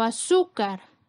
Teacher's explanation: su es la sílaba con mayor fuerza, es la penúltima sílaba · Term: graves o llanas